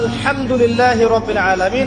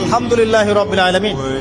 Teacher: এই হা এর মাখরাজ কোথায়? কণ্ঠনালীর মাঝখান থেকে। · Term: হায়ে হত্তির